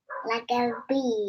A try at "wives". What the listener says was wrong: No, not a B. A V. V for violin. ventricles. V.